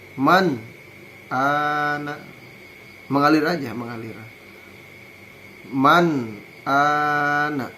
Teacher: Contoh idhar nun mati menghadapi alif hamzah, alif ya. Man ana, jelas nun sukunnya, dibaca jelas nunnya apabila bertemu dengan hamzah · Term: izhar halqi